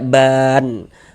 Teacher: Tapi tadi kita bacanya itu berwaqf berhenti di huruf nun sehingganya ba mad thabi'i ditambah huruf nun yang disukunkan ditambah huruf nun yang dimatikan sebab berwakaf maka dibaca ban. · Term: mad arid lukun